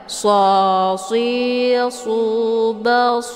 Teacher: Shad ini bacaannya tebal ya SH tebal ya dan dia ada angin ada suara siul karena Shad ini adalah bagian daripada sifat saofir Basir Nah kalau · Kemudian si shad, ini bacaannya tebal ya